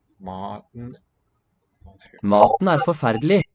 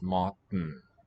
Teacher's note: T is not actually released. We transition straight from the T closure into the nasal syllable.